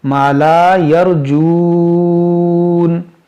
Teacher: دیکھیں یہاں پر مد عارض کا قاعدہ لگے گا، کیونکہ یہاں وقف ہے تو اس نون کو ساکن کریں گے تو یہاں واو مدہ کے بعد عارضی سکون آئے گا رکنے کی وجہ سے، تو یہاں پر مد عارض کریں گے